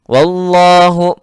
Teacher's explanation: Wallahu alif lam jalalah, mohon maaf, lamul jalalah mufakhamah karena sebelumnya berharakat fathah.